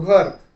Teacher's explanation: प्रमाण मराठी शब्दाच्या शेवटी येणारा अ हा स्वर अपूर्ण किंवा मूख उच्चारला जातो